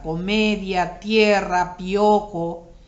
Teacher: Una vocal cerrada más una vocal abierta. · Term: diptongo